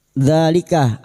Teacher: alif kecil di atas dua harakat kita panjangkan mad thabi'i